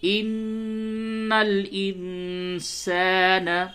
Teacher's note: اور چونکہ اس سے پہلے بتایا جا چکا کہ جب بھی نون پہ اور میم پہ تشدید ہو، تشدید اسے کہتے ہیں، تو وہاں پہ غنہ کرتے ہیں۔ تو چونکہ نون کے اوپر تشدید ہے تو یہاں پہ آپ کو غنہ بھی کرنا ہے